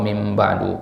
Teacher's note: Membalik nun sakinah, nun sukun menjadi huruf mim. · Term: qalbu an-nunis sakinah miman